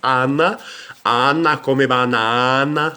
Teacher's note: Então, nós temos A, e o som do A vai ser sempre aberto, então a gente diz Ana, Ana come banana, lembra?